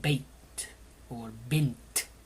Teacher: it is a sukun, which is the absence of any vowel. You come straight to a stop.